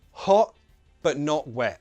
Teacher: it's really, really common to use the glottal T when a word finishes with a T sound.